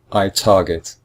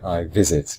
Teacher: the second syllable is not stressed. It is the first syllable